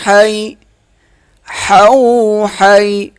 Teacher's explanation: حا کا حرف گلے کے درمیان سے ادا ہوگا